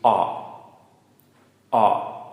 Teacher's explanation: this is a short, low sound, and it's more like an AW